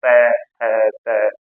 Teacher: है आप इन्ह ऐसे भी प्रयोग कर सकते हो त त जीभ आपकी दांतों पर ही जाएगी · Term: दंत वर्ण